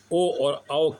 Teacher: कंठ और ओष्ठ के सहायता से बोले जाते हैं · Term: कंठोष्ठ